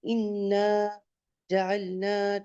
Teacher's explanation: جہاں الف آئے گا آپ کتنا کھینچیں گے اس کو، 2 کاؤنٹس، 2 حرکات کے برابر